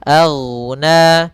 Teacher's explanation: Hati-hati pada pelafalan ghain, jangan sampai ke pantul. Karena huruf ghain bukan huruf pantul. Karena dia salah satu huruf yang dia adalah isti'la dan idbaq tebal.